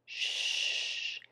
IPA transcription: ʃ